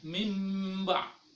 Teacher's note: membalikkan atau mengganti bacaan nun mati atau tanwin ke dalam atau menyerupai huruf mim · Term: iqlab